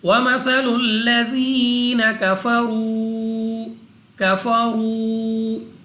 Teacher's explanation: را کے اوپر پیش، را کو پر پڑھیں گے، اور اس کے بعد واو مدہ ہے 2 سیکنڈ تک لمبا کرنا ہے۔